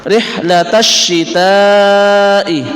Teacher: Karena kita perhatikan ada alif lam, setelahnya alif lam itu diikuti oleh syiddah atau tasdid. Maka alif lamnya itu dibuang, tidak dibaca. Seakan-akan itu tidak ada, walaupun di situ aslinya ada. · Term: alif lam syamsiyah